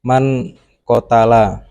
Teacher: menyamarkan suara nun mati atau suara tanwin dengan cara berdengung dan berdurasi panjang minimal 2 harokat contoh Ikhfa Haqiqi Man kotala yaitu nun sukun bertemu qaf kemudian